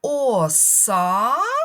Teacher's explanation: Ми тягнемо голосний звук А. Ми це чітко з вами чуємо. Отже, саме цей голосний звук а і є наголошеним, а він знаходиться у другому складі.